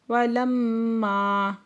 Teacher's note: میم مشدد گنہ واجبہ کریں گے، ماں پہ علی مدہ دو حرکت کھینچ کے پڑھیں گے۔